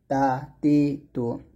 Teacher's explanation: আর তার উচ্চারণ করতে হবে জিহ্বার আগা সামনের উপরের দুই দাঁতের গোড়ার সঙ্গে লাগিয়ে তার উচ্চারণ করতে হবে